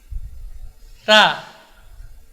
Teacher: huruf ta yang dari ujung lidah ya, bersentuhan dengan ujung gigi seri atas, 2 gigi seri atas.